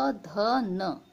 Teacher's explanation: ये होते हैं दंत, यानी कि जब भी आप इनको साउंड करोगे तो ये दांत से टकराएंगे